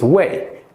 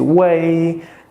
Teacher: when we practice the pinyin, it's like the first tone is way. It is flat.